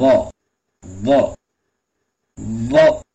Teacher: நாக்கினுடைய அந்த நுனிப்பகுதியை மேல் பல்லினுடைய உள்பக்கம் வச்சு சொல்லணும்